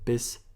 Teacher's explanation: when I'm saying the s in German it's a sh sound it's not a s like in English so bisa especially when the S is at the first uh